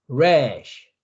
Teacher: rash 할 때 R 발음인데 여러분이 목구멍에서 소리가 나오면서 혀가 그냥 입 천장에 붙지도 않고 밑에 있지도 않고 중간에 뜨는 상황입니다.